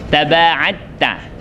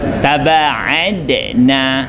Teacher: Dia kalau hukum tajwid dia dah diidghamkan dal kepada ta. Dal sudah tidak diqalqalahkan. Taba'atta. Idgham mutajanisain.